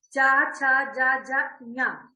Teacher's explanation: तो चा वर्ग का उच्चारण स्थान क्या है? तालु, यानी जीभ हमारी तालु को स्पर्श कर रही है।